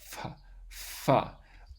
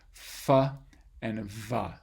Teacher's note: it's a constriction between the lower lip and the upper teeth, and then you just kind of push air in between that narrow constriction. F and v. The F is voiceless, the V is voiced. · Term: labiodental sound